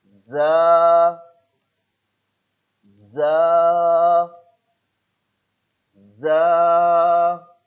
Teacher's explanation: زبان کی نوک جب اوپر اور نیچے کے اگلے دونوں دانتوں کے درمیان آ جائے اور یہاں سیٹی کی آواز بھی نکالنی ہے